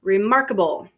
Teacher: because the root is mark we put a stress on that syllable so therefore the unstressed syllables are re and able unstressed so